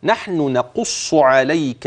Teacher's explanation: والقاف والصاد كلاهما مفخم